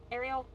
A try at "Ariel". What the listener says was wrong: No, there's no L in it.